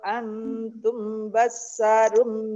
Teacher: mim sukun bertemu dengan huruf ba ya Ikhfa Syafawi samar-samar